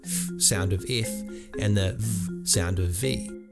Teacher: sounds using the top teeth with the bottom lip